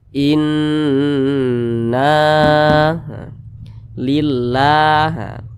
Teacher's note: huruf alif di belakangnya ada huruf yang memiliki tanda baca fathah maka dibaca panjang huruf nunnya Mad Thobi'i panjangnya dua harakat atau kira-kira dua katukan